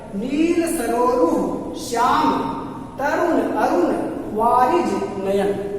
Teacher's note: सरोरु करें तो रो पर जोर पड़ रहा है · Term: बलाघात